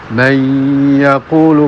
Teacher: Kesalahannya adalah kurang menekan tasdidnya sehingga dengungnya kurang ke pangkal hidung.